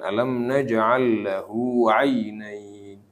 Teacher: Itu lahu cukup dua hu-nya itu 2 harokat aja. Jangan lahu 'ainain. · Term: mad